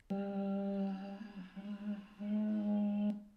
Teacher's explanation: we heard quite a breathy voice with some rough sound at the end